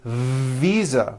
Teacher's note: international fisa correct no I said fisa with an unvoiced F I should have said visa with a voiced v